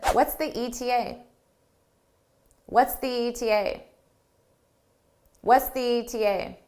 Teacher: But if I did a more stressed E in the, it would really blend together with ETA, the TA, and it would almost sound like it's just one word, the TA, because I wouldn't really repeat the E on ETA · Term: blended together